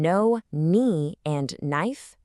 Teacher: In no, knee, and knife, that K is a complete ghost. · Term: silent